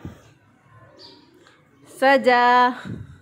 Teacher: सीन की अदायगी में सीढ़ी जैसी आवाज़ आनी चाहिए